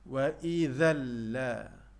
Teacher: Bermaksud idgham bila gunnah, dan bacaan ini tidak disertai dengan dengung.